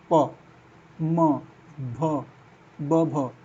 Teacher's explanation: दोनों होठ सट रहे हैं